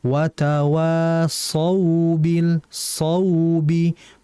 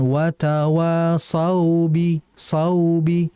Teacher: harusnya sod, karena sod ini sifatnya isti'la dan itbaq. Jadi harus ditebalkan dengan jelas.